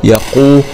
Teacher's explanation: قاف ضمة قو ونفخم القاف يقو، واو سكون مضى طبيعي يقو، ولام ضمة لو يقول.